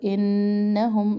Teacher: نون مشدد غنہ ایک الف برابر